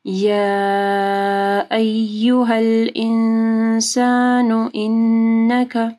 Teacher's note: یا ایھا الانسان انک، یا ایھا الانسان میں دیکھیں مد ہے، اس کے بعد حمزہ ہے تو 4 سے 5 حرکات کے برابر لمبا کرنا ہے